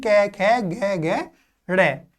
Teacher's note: जीभ का जो पिछला भाग है वो कोमल तालु को स्पर्श करेगा, तो जो हमारी ध्वनि निकलेगी वो हमारी कै वर्ग यानी कि कंठ से ध्वनि निकलेगी। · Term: कंठीय ध्वनि